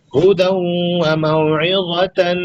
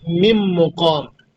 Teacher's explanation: ادغام مع الغنہ ہوگا، مطلب اس کو اس کے ساتھ ملا کے پڑھیں گے اور ساتھ میں غنہ کریں گے